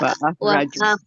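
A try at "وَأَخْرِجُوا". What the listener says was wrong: Wa akhriju bukan wa akhraju.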